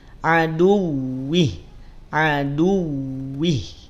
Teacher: wau tak perlu ditahan ya teman-teman · du monyongkan, kemudian masuk pada waw, aduwih. Jelaskan. Ya, pelafalan wawunya jelaskan. · Ya teman-teman ya, wawunya tidak perlu ditahan, cukup ditekan saja.